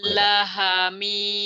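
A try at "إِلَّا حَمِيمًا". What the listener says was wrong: la-nya kan panjang, ada bendera nih, ila, ayo, tenang jangan buru-buru, mhm.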